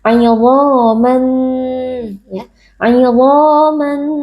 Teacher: tanwin yang bertemu dengan huruf nun hukumnya adalah idgham bighhunah jadi kita memasukkan bunyi tanwin ke dalam huruf nun kemudian kita tambahkan dengan dengung yang dipanjangkan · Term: idgham bi gunnah